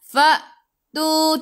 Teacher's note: hamzah ada baris sukun, kena baca dengan putus, baca dengan tahan nafas.